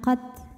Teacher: Angin dan suaranya tidak barengan kalau untuk tak yang sukun ya. Anginnya belakangan, qad. Kalau taknya hidup anginnya barengan.